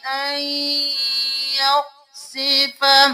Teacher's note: ہم یہاں پر نون کو نہیں یا کو پڑھیں گے، این کے ساتھ، غنہ کیا اور پھر ہم نے مدغم کر دیا